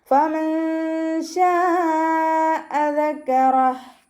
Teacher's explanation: മേലെ മുൻപല്ലിൻ്റെ അറ്റം താഴെ ചുണ്ടിൻ്റെ ഉൾവശത്ത് നനഞ്ഞ ഭാഗത്ത് വെക്കുക.